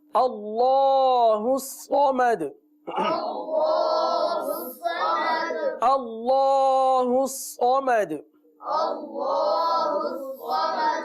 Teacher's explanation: اللہ عز و جل کے لام کو پر پڑھیے